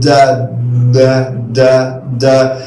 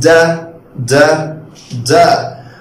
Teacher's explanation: لو انا بقول دا دا دا دا هلاقي الفوكال كوردز بتاعتي يعني الاحبال الصوتيه بتاعتي لازم تهتز عشان اصدر هذا الصوت، فعشان كده بقول عليه voiced sound.